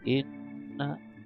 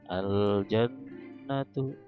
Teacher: Jadi apabila ada mim yang bertasdid, tasdid itu yang ini, yang ada kayak B kecil di atas huruf tasdid, dan nun yang bertasdid juga, nun atau mim yang bertasdid, maka dibacanya berdengung, ya, dan disebut bacanya itu gunnah. Gunnah artinya dengung, ya.